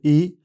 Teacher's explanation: इस स्वर के उच्चारण में जीभ मुंह के आगे और ऊपर की ओर रहती है तथा होठ फैले रहते हैं। बंद स्वर यंत्र से आने वाली हवा बिना किसी रुकावट के निकलती है। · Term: स्वर ई